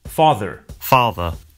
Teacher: Notice that the final R sound is not pronounced in British English. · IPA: /ˈFɑː.ðə/